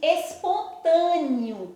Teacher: Mas na hora que eu pronunciei esse E, não apareceu o sonzinho do E. Apareceu o sonzinho do I. Eu disse espontâneo. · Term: semivogal